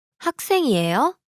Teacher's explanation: the question is formed by the rising intonation